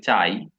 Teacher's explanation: তাহলে এখানে দুইটা স্বরধ্বনি আছে, যেখানে আটা হচ্ছে পূর্ণ স্বরধ্বনি, যেটা শেষ করে ফেলছে, আর ই এটা অর্ধ স্বরধ্বনি, যেটাকে আপনি চাইলেও বড় টান দিতে পারেন না · একটা পূর্ণ স্বরধ্বনি এবং একটা অর্ধ স্বরধ্বনি মিলায়া যখন কথাটা বললেন, তখন এটাকে বলা হয় দ্বি স্বরধ্বনি